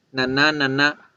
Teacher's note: la n es nasal alveolar porque la punta de la lengua se va para acá para los alveolos